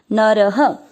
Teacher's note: नर दोनों अक्षर पूरे दोनों में अ मिक्स करेंगे नर, र में अ की मात्रा इसलिए विसर्ग को पढ़ेंगे ह